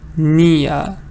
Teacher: British speakers try to have the short E, a little schwa, and they remove the R in pronunciation